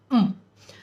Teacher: can hear the uh sound at the end the schwa sound we don't want that schwa sound the sound of m should just be um